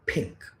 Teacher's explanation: This is a monosyllabic word, has just one syllable, and it has a pa sound in the beginning of this word. So this pa sound will get aspirated